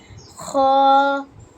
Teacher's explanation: হ্যাপ গলার মধ্যখান থেকে আসবে হ্যাপ, একটু চাপ দিয়ে। পরে খ, একটু খসখস আওয়াজ বের হবে খ